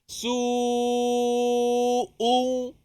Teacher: Hamzah ni huruf yang tertahan, syiddah. Su'u. Mesti ada berhenti suara sikit.